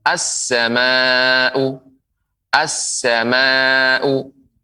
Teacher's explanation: jadi alif lam, lamnya dilebur menjadi sin, as, sehingga sin bertasydid.